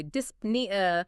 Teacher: The syllable splits it. You say dis n e a, both consonants fire.